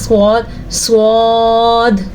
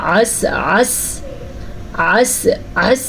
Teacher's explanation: اگر ان دونوں کے درمیان میں زبان کی نوک آ جائے تو سین، صاد، زا ادا ہوتے ہیں. ان کو اصلیہ بھی کہتے ہیں کیونکہ ان حروف کی ادائیگی کے وقت سیٹی کی آواز پیدا ہوتی ہے